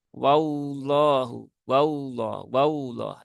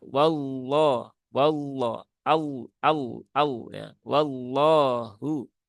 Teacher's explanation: cara mengucapkan lam yang tebal ini maka sama yaitu dengan cara menaik pangkal lidah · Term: lam tebal